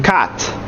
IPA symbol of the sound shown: æ